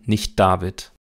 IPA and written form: nɪçˈd̥aːvɪt (nicht David)